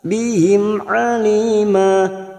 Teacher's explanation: mim sukun bertemu ain idhar safawi dibaca jelas